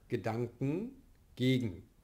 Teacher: Hier sind wir velar und somit erfolgt die Lösung auch im velaren Nasal.